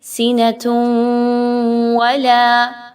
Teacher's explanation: آپ نے تنوین کی آواز کو واو کی آواز میں ملانا ہے اور ود غنہ، غنہ بھی کرنا ہے۔ آگے دیکھیں تو آپ سینۃ میں غور کریں تو سین کے نیچے زیر ہے اور نون پر زبر ہے۔ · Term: ادغام ود غنہ